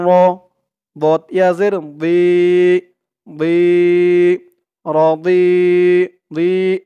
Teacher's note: মুখটা একটু ভরপুর হয়ে যাবে এরকম মনে হবে দোয়াদের উচ্চারণটা করার সময়